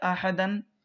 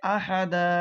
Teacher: دو زبر پر وقف کرنا ہو، سانس توڑنا ہو تو ایک زبر کے ساتھ الف پڑھا جاتا ہے، جیسے احدن آپ کو سانس توڑنا ہے تو پڑھیں گے احدا۔